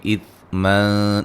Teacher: نون تنوین کا باریک اخفا ہے